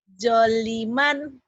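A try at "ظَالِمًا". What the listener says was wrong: Kan panjang zoknya.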